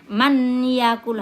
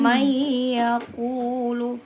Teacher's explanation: Jadi harus didengun. Tidak boleh kita baca man ya. Itu salah kalau bilang man yakul, harus langsung iya.